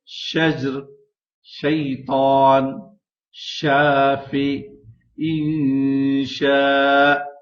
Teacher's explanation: شین کی آواز ہمیشہ منہ میں پھیل کر نکلتی ہے، جیسے شجر، شیطان، شافی، انشاء۔